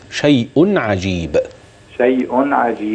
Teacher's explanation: ده تنوين بده عين اظهار حلقي